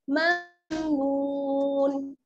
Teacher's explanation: अजरुन गैरु ममनून, मीम मीम ज़बर ममनून, वाव पेश नून, वाव साकिन है, वाव साकिन से पहले पेश की हरकत है, इसलिए क्या हो जाएगा वाव मद्दा, थोड़ा सा खींच कर पढ़ेंगे, ममनून ममनून, नून दो ज़ेर निन, और अगर ठहरेंगे आयत पर तो हम क्या करेंगे नून को साकिन कर देंगे, यानी दोनों ज़ेर खत्म हो जाएंगे और नून पर क्या है जज़्म लग जाएगा, ममनून।